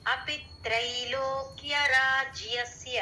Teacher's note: త్రై దగ్గర కొంచెం స్ట్రెస్ ఇచ్చినట్టు